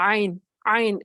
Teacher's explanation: ہا جو ہے آواز بھی ہے اور سانس بھی ہے، اور عین جو ہے وہ سانس آ تو رہی ہوتی لیکن وہ واضح نہیں ہوتی، ٹھیک ہے، وسط حلق سے وہ ادا ہوگی۔